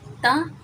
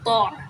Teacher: دیکھیں تا باریک اور تو موٹا